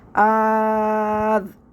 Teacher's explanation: دوسرے حمزہ کو الف سے بدل کے پڑھیں گے ، یعنی کہ اس حمزہ کو الف سے بدل کے پڑھیں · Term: ابدال